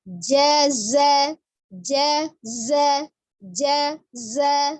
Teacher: Ujung lidahnya di antara ujung gigi seri atas dan bawah hampir bertemu dengan ujung gigi seri bagian bawah ya untuk za.